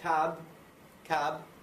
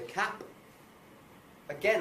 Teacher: I should be able to hear the B and its vibrations moving